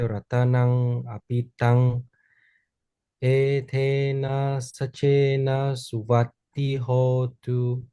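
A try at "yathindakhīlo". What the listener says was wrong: Okay, well, that was very good. Except for your long I again. Yatinda kilo.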